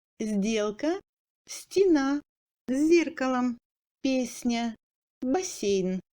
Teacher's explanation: Le phonème S dur passe en S ou Z mou devant D, T, Z, S, Ni.